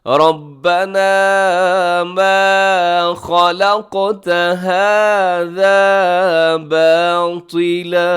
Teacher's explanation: ربنا میں راہ موٹا ہے اور منہ بھر کے پڑھیے گا سے. ما خلقت قاف موٹا بھی ہے، ساتھ اس کو قلقلہ بھی کرنا ہے.